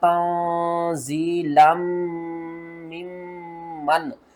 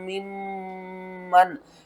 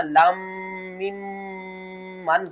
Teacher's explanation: ये जो 2 मीम है ना, यहाँ पर लिखी हुई तो 2 मीम है लेकिन पढ़ने में 4 मीम पढ़ी जाएंगी और इनके ऊपर दोनों के ऊपर गुन्ना हम करेंगे